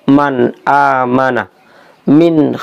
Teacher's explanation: Jadi huruf n-nya Itu tampak dengan jelas · Jadi di sini hukum nun mati bertemu dengan huruf hamzah, he, ain, ghain, ha, kho ini akan dibaca jelas N-nya atau nunnya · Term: Izhar, idhar